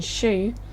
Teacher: Sounds like sh, as in shoe, are produced when the tongue comes close to or touches the hard palate